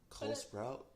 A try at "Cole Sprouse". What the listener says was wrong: Cole Sprouse. You said Sprout